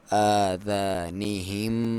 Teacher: ایک ناک میں سے آواز نکالیں گے 1 الف کے برابر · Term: غنہ